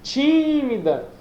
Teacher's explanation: Então a sílaba tônica é o ti